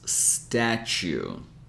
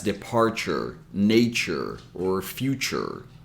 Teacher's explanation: this statue you're going to notice that a lot of times when we have t in U and a syllable that's not emphasized T will have this CH sound